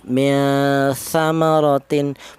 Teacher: antara samar dan dengung dibaca sama. Tidak ada yang lebih dominan. Itu namanya ikhfa ausat.